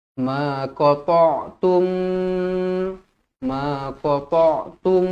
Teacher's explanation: idgham jadi dengung dua harakat